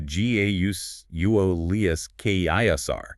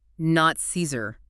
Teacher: Gaius Julius Caesar, In classical Latin, the pronunciation would have been something closer to Gaulius Caesar, that hard C or K sound, and the A diphthong like I